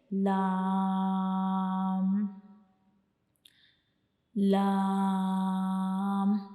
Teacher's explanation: ज़बान का, हमारी ज़बान का जो किनारा होता है वो हमारे ऊपर वाले सामने वाले जो दो दांत होते हैं उनके अंदर वाली साइड पे जो मसूड़े होते हैं उनको टच करता है, उनसे जा मिलता है, तो तब हम लाम को अदा करते हैं।